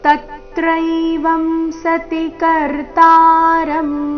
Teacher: ಮೊದಲನೇ ಅಕ್ಷರ ತ ಮೇಲೆ ಆಘಾತ.